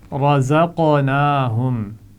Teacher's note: قاف ساکن ہے تو اس پر قلقلہ ہوگا